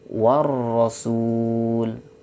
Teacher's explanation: lihat di situ ada huruf alif dan lam, tetapi tidak dibaca, dilewatkan dari waw langsung ke ro. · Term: alif lam syamsiyah